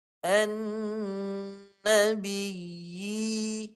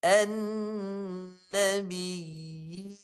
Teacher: Jadi baca begini yang dimaksudkan tamkin tetapkan bunyi ya mati tu jaga jangan sampai idgham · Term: mad tamkin